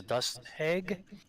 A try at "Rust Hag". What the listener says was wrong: Rust. Rust hag. Not dust. Rust.